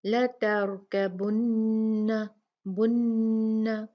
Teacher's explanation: اس میں ہم نے بہت اچھے طریقے سے غنہ کرنا ہے نون پہ